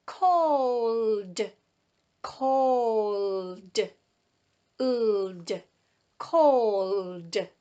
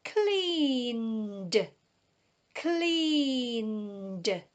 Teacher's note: when these words are put in the past tense using ed, it makes a sound d